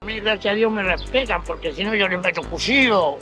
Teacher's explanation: Otra característica, la CH se pronuncia fricativa.